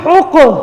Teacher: اسی طریقے سے یہ دیکھیں یہاں پہ ہم نے کس چیز کا خیال رکھنا، ہا کا، یہ سینے سے آواز نہ ہے بلکہ حلق سے آواز ہے، ہا، قاف، قاف کو موٹا کرنا ہے اور یہ حروف قلقلہ میں سے ہیں۔ پہلے قاف کو ہا کے ساتھ ملائیں گے، پھر قاف کی اپنی حرکت کے ساتھ اس کو پڑھیں گے، ہا، قاف، پیش حق، قلقلہ ہوگا نا، حق۔